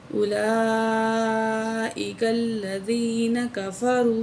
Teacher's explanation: उलाई बड़ी मद है, लाम 4 अलिफ के बराबर खींच के पढ़ेंगे, साथ खड़ी ज़बर भी है।